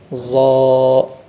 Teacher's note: तो ज़ा पढ़ते वक्त सामने के दांतों की जड़ों में ज़बान की नोक को लगाकर सही से अदा करना